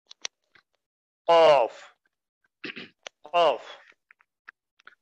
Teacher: জিব্বার গোড়া তার বরাবর উপর দিকে লাগাইয়া